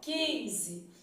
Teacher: O U não foi pronunciado e o I e o N foram pronunciados aí com som nasal.